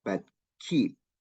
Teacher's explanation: So we don't release p sound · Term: unreleased p